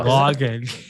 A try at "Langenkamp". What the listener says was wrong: Isn't it Langen with an A? It's like Langenkamp.